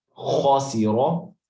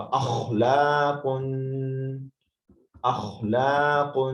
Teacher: یہ تالو اوپر نرم حصے کو آپ انفیکشن یہاں سے سٹارٹ ہوتا ہے اصل میں، تو یہاں پہ آپ ادھر یہاں پہ گرم پانی سے آپ غرارے کریں تو خو کی آواز وہاں سے ادا ہوگی. سو خو جو ہے خاسیرو، اس کو بھی فل ماؤتھ پڑھیں گے منہ کو گول کر کے